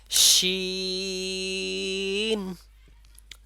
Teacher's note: আপনাদেরও দুই সাইডে বিস্তৃত অবস্থায় থাকতে হবে তাহলে শিন বলার সময় শিন একটা শব্দ হবে এবং তিন আলিফ পরিমাণ টান হবে ঠোঁটটা চারিদিকে মানে দুই সাইডে চওড়া অবস্থায় থাকবে ঠিক আছে এই